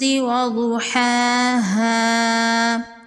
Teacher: ضاد حروف مستعلیہ میں سے ہے، ضاد کو پر پڑھیں گے۔ کھڑی زبر ہے، ایک الف کے برابر کھینچ کے پڑھیں گے۔